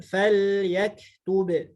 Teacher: lam ini sifatnya tawassut, kemudian kaf ini syiddah, ba juga syiddah